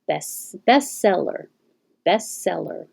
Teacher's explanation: this e is not stressed it's possible to just skip it the t is really difficult to make between the two s's best seller so just skip it · make the s sound a little longer